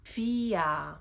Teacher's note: When the R is after a vowel, it makes the sound ah